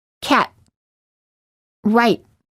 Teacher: This time, do not release the T. Just let your tongue stay on top, touching the gum ridge with no air coming out when you're saying the T. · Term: held T